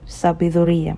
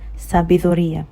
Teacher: Take note, I'm not saying sabiduría. The D is not strong. I'm saying it like the way I would say they, okay? So take note of the way I'm doing the D.